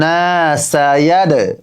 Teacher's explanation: আমি সায়াদ কেন এখানে ধাক্কা দিচ্ছি, কারণ এটা দালটা হচ্ছে কলকলার হরফ